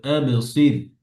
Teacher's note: সদ হ্যাভি, র পাতলা